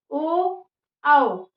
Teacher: ओ आओ यानी कि कंठ पे और होठों पे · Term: कंठोष्ठा